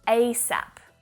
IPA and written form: 'eɪ sæp (ASAP)